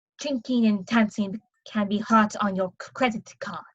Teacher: the DS usually become T's